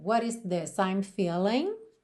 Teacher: E o T foi ligado com rarara, what is, ok? Por isso está pintadinho aí de azul claro.